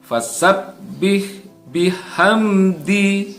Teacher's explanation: ha yang bertanda sukun ini adalah hak tipis. Ya, bukan ha yang berbunyi agak berat, ya, bukan fasabbih tapi fasabbih.